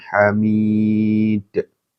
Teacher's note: Ya, memantul ya. Hamid, qalqalah ya.